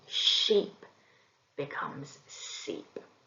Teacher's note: Fronting can also include the sh sound, and this is replaced with a s. So often we see sheep becomes seep.